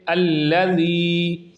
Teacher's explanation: یا ساکنہ ہے جسے آپ دیکھ رہے ہیں اسکرین پر، یعنی یا پر جزم ہے اور اس سے پہلے ذال کے نیچے زیر آ گئی ہے، تو اس لیے یہ یا مدہ ہوگا اور صرف ایک الف کی مقدار کے برابر اسے کھینچ کر پڑھیں گے